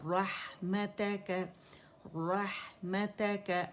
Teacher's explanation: हा बारीक है, रोह रोह करके हमने नहीं हा को मोटा करना